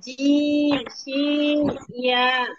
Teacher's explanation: 6 নম্বর মাখরাজ জিহ্বার মধ্যখান তার বরাবর উপরে তালুর সঙ্গে লাগাইয়া